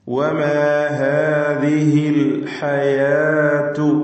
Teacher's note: ഹാ തൊണ്ടയുടെ അങ്ങേയറ്റം, ഹാ തൊണ്ടയുടെ മധ്യം, ഇവിടെ നിന്നൊക്കെ ഉച്ചരിക്കുവാൻ പ്രത്യേകം ശ്രദ്ധിക്കുക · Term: ഹൽക്കിയ അക്ഷരങ്ങൾ